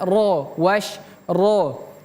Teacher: Ini huruf ro. Huruf ro itu merupakan huruf tebal. Kalau dia fathah. Ini fathah.